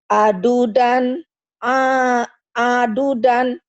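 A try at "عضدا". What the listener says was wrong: nggak ada yang panjang. Aldudan, ya.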